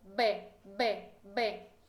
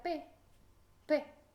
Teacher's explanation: se apagó las cuerdas vocales y hago lo mismo con mi boca me sale la p p entonces ve son un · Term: consonantes sordas